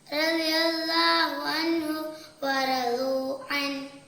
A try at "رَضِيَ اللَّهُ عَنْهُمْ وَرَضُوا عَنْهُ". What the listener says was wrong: അൻഹും വറളൂ അൻ ട്ടോ. അങ്ങനെ വേണം ഉച്ചരിക്കാൻ. അൻഹും എന്ന് ശരിക്ക് കേൾക്കണം, കാരണം ഇവിടെ വാവും കൂടിയാണ്. അതുകൊണ്ട് ശരിക്കും അവിടെ ആ മീമിനെ അവിടെ ഉച്ചരിക്കണം. റളിയല്ലാഹു അൻഹും വറളൂ അൻ.